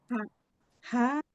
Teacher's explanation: Ha tengah tenggorokan, keluarnya tengah tenggorokan.